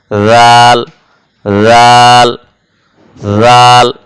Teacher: সামনের উপরের দুই দাঁতের আগার সঙ্গে লাগিয়ে উচ্চারণ করতে হয়